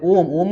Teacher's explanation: प्लुत स्वर कहलाते हैं। प्लुत स्वर के उच्चारण में दीर्घ स्वर से अधिक समय लगता है।